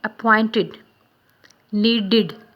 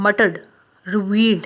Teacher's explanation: The ed in the appointed word in the word appointed and needed is pronounced id, id. The ed in the murdered and the revealed is pronounced d.